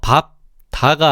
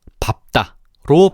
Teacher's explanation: 그래서 밥 다가 아니라 밥다로 발음이 되는 거지. 디귿이 비읍의 영향을 받아 쌍디귿으로 교체가 되었네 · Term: 된 소리 되기, 된소리 되기